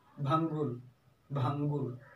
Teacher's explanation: अनुस्वार में क्या है कि वायु केवल और केवल नाक से ही निकलती है